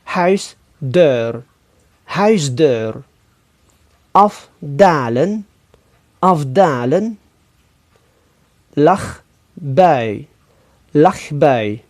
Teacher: jika konsonan-konsonan tak bersuara Fe se k bertemu dengan konsonan-konsonan bersuara be De maka konsonan-konsonan tak bersuara tersebut berubah menjadi konsonan-konsonan bersuara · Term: asimilasi